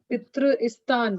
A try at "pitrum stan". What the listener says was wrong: Pitrum, M, Pitrum.